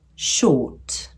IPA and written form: ʃɔːt (short)